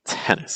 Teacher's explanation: I want you to notice just how weak that nis syllable is. Nis. It's not tennis, because that's going to be too heavy.